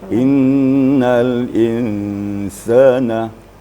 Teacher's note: Inna itu namanya wajibul gunnah, wajib berdengung.